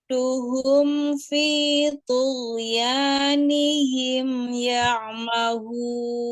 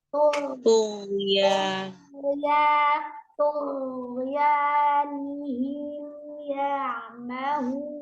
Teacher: hati-hati di huruf ghain, tidak dipantulkan, tidak mengalir nafasnya karena dia jelas, al-jahru bukan al-har, hanya mengalir suara.